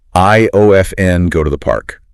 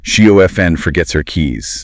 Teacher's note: The harsh consonant just melts away into the vowel. · When you drop that T, the word O-F-N links beautifully to the words around it, whereas O-F-T-E-N acts like a tiny speed bump in the middle of your sentence. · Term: connected speech